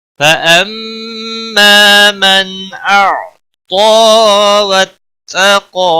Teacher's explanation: فاما میم مشدد پر غنہ ہوگا، الف مدہ بھی ہے، 1 الف کے برابر کھینچ کر بھی پڑھیں گے۔